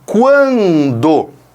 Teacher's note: o N está trazendo o som nasal para o A. Então é wan, não é o A, certo?